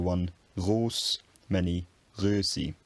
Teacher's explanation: Then we have I mutation, Under the influence of the I in the following syllable, the back rounded vowel O becomes a front rounded vowel, Ö. So one roos, many rösi.